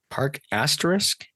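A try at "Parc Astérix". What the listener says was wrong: Asterix with an X.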